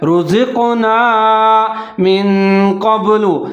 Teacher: قاف کو موٹا پڑھنا ہے، جہاں آپ نے قلقلہ کرنا ہے